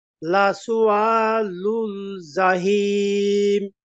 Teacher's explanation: লাস এক আলিফ টান, লুল জাহিম এখানে তিন আলিফ টেনে পড়বো, আর এখানে অক্ফের কারণে সাকিন হচ্ছে এজন্য।